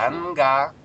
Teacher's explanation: в слове ганга у нас звук Н звучит не как нга, а как вот обычный Н